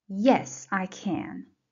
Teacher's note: As you see, in this short positive answer, can is stressed. That's the only place we stress can when it is in a short positive answer.